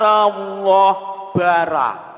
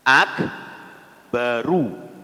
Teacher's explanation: Ru bukan ro apalagi ra